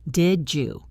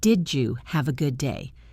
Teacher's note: This creates a much smoother flow because instead of stopping your air for the D and starting again for the Y, you just slide through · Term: the blend